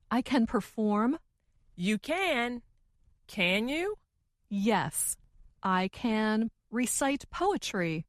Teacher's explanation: the more wanted to emphasize or make her meaning clear the slower she said the word can